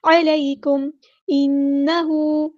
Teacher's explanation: نون پہ غنہ زمانی ہو رہا ہے، الف کے برابر رکیں گے